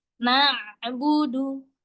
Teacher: Huruf ain itu ketika dia sukun suaranya nampaknya sedikit mengalir. Jadi enggak ngalir banget.